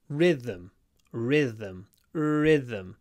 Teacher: with a nice long r at the beginning